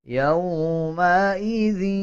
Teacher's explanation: جب دال کو یا کے ساتھ ملائیں گے تو غنہ کریں گے اور غننے کی آواز کو ناک سے نکالا جائے گا